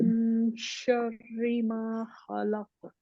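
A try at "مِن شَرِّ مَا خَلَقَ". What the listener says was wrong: फिर कोशिश करें और खा को और मोटा करें और काफ को और मोटा करें।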